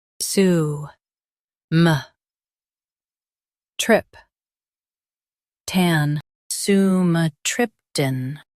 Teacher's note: Emphasize trip and keep tan light.